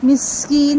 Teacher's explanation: سین کی سیٹی واضح، نون پر مد عارض